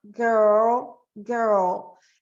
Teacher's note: o R, em inglês, ele é um R que a língua vai fazer esse movimento para trás